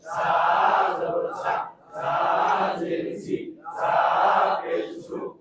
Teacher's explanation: সামনের নিচের দাঁতের আগা থেকে শীষ পাতলাভাবে আদায় হবে।